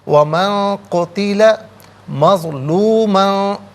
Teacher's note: نون ساکن کو یہاں پر اخفا کے ساتھ پڑھیں گے، یعنی ناک میں آواز لے جا کر گنگنانا